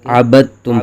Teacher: آگے عبدتم میں پہلا حرف یعنی با متحرک ہے، دال ساکن ہے اور آگے تا مشدد ہے، تو ساکن حرف کو چھوڑ دیں گے، با کو تا کے ساتھ ملا کے پڑھیں گے، عبدتم نہیں بلکہ عبدتم پڑھیں گے۔